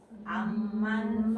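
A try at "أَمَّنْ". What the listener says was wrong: aman ini satu aja. Aman gitu.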